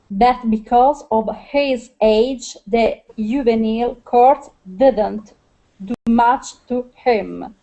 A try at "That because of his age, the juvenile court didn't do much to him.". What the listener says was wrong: Good, much better with your I sounds.